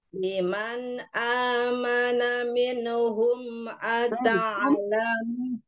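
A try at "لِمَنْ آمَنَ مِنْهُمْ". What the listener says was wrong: Ulang minhum jangan diseret-seret ya. Man amana minhum bersih jangan ada minhum. Liman amana. tinggal itu yang jangan dipantulkan dot sukun juga jangan dipantulkan ro sukun diseret yang terseret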